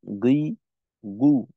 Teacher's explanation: হয়ে যায় তো গাইনের উচ্চারণটা আমাদের ভুল হওয়ার কারণ হলো যে আমরা মাখরাজ থেকে আগে চলে আসি অর্থাৎ জিওভার গোড়া ছেড়ে জিওভার গোড়ার অগ্রভাগে চলে আসি